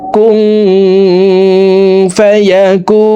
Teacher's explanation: কু এখানে 3 আলিফ টেনে নুনকে সাকিন করে ফেলবো, কারণ পেশের বাম পাশে জাজমালা ওয়াও মদার হরফ, তো এই মদার হরফের বামের হরফে ওয়াকফ হইলে মধ্যে আরজি 3 আলিফ টেনিয়া পড়িতে হয়।